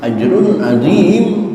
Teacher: Tanwin ketemu ain. Izhar. Izhar artinya jelas. Jelas tanpa tahanan. Maka lepaskan saja. Ajrunim. Jangan sampai ditahan sehingga terdengar bacaan ajrunim itu gagal idharnya.